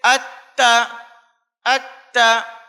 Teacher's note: تا کا مخرج زبان کی نوک اوپر کے 2 بڑے دانتوں کی جڑ ہے، تو تشدید میں سختی وہیں کی جائے گی